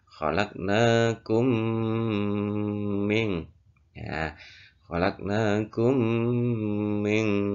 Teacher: untuk idgham itu harus kita baca dengan cara berdengung, masuk dengan berdengung. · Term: idgham mimi